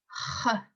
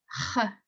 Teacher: don't pronounce the R like in English with a R sound. It's the sound H. It should hurt your throat a little bit.